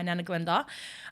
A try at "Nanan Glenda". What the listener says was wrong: Nanan. You said Nana.